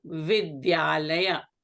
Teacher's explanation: Vidya ends in a long A. Alaya starts with a long A. So these two combine and become a long A.